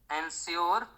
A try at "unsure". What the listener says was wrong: तो आप यहाँ पे देखिए, आप बोले एनश्योर, हमको लगता है कि वो एनश्योर नहीं होकर अनश्योर होगा, UNSURE, I was अनश्योर of the reaction I would get.